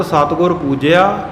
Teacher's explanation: ਇੱਥੇ ਸਤਿਗੁਰੂ ਪੂਜਿਆ ਨਹੀਂ, ਦਲੈਂਕੜ ਨਹੀਂ ਬੋਲਣੀ